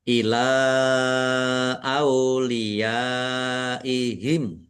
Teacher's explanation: Ya, fathah alif mad thobi'i. Tetapi karena bertemu dengan huruf hamzah dalam satu kata maka menjadi mad wajib muttasil. Dibaca panjang harus lima harakat. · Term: mat wajib muttasil